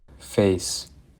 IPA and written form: feɪs (FACE)